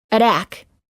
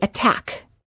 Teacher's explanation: the T does not change to a fast D sound if the T is within a stressed syllable